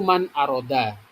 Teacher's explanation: Pada bacaan ini nun sukun bertemu dengan hamzah ya, nun sukun ketemu dengan hamzah atau alif ya. Karena hamzah itu termasuk huruf idhar, makanya di sini cara membacanya dibaca jelas tanpa dengung.